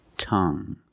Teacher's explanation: the end is silent so we pronounce it like young tongue you have only the nasal sound there's no G · You have only the nasal sound. There's no g. It's just the sound Tongue.